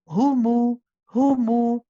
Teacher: dive into the dhamma straight away and make a proper u sound